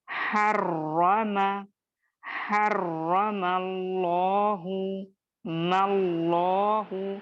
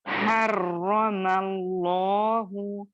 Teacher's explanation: हा बारीक लेटर है, दरमियानी हलक से या वसत हलक से अदा होने वाला लेटर है। रॉ को आप और मैं मुखफ्फम या मोटा पढ़ेंगे, और चूंकि तजदीद है यहाँ पे रॉ पर, तो इसको दो हुरूफ के जैसा अदा करेंगे।